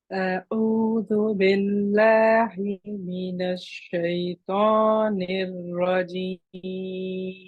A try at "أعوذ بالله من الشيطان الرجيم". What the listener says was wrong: I can see you're still working on your hamza and your ain at the beginning. The hamza is sounding a lot better. The ain just needs a little bit more.